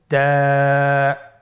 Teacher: তা হরফটি বারিক হরফ এবং এক আলিফ টেনে পড়তে হবে · জিহ্বার আগা সামনের উপরের 2 দাঁতের গোড়ার সঙ্গে লাগিয়ে উচ্চারিত হয়